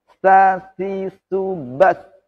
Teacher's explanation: Itu hanya desisan nafas. Tidak ada S. Kalau ada S berarti ada tambahan huruf. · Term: hamas